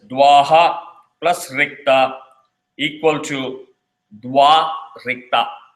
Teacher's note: So the visarga is dropped and both the words are combined as dwa rikta.